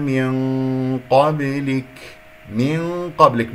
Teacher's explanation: نون قاف غنة مفخمة